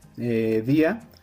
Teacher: Pues bueno, cuando el acento cae sobre la boca débil, por ejemplo en la palabra, día, como el énfasis de la pronunciación cae en la vocal débil, la I, se rompe el diptongo